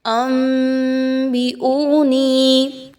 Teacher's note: اقلاب کا قاعدہ فالو کریں گے، بالکل بھی نون کی آواز جو ہے وہ نہیں نکالنی بلکہ آپ نے نون کی آواز کو میم کی آواز میں بدل دینا ہے۔ انبئونی، حمزہ واو پیش او، واو مدہ ہے، نون یاز نی، یا مدہ ہے، 1 سے 2 الف کے برابر ان دونوں کی ادائیگی رکھیں گے۔